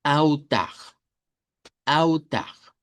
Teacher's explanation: La palabra en español es altar, pero en portugués la L se convierte en una U corta o una W, dependiendo de cómo lo querramos pronunciar.